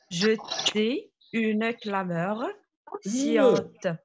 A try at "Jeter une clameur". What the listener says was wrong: Il faut prononcer le E.